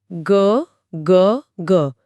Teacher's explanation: पूरा गला वाइब्रेट कर रहा है।